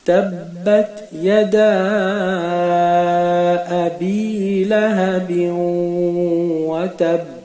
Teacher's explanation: La première chose qu'on remarque, c'est que nous avons appliqué ici la règle du qalqala dans le bas, la dernière lettre de la phrase. Mais nous avons ici également allongé la lettre après le dal de yada. C'est ce qu'on appelle le mad. Donc sans rentrer dans les détails, nous allons allonger à peu près le temps de 3 alifs, 3 secondes.